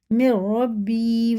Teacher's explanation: را کی آواز آئے گی، نون کی نہیں آئے گی، نون کی جگہ را کو رکھ کے پڑھیں گے